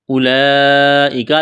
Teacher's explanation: لمبی مد ہے، 4 الف کے برابر کھینچنا ہے